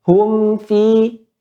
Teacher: Mim keluarnya bibir atas dengan bibir bawah, hum. Pada fa, gigi seri atas bertemu dengan bibir bawah.